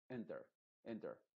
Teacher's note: tampoco es enter enter sino que es como una e pero muy apagada